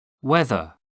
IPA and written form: ˈwɛðə (weather)